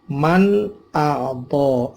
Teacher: Man a'to, ada nun mati ketemu hamzah, nun matinya dibaca jelas. Man namanya idhar halqi karena ketemu huruf halak yaitu alif atau hamzah.